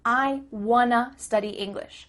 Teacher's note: Here we're changing want to wanna. Again, the word to changes to a.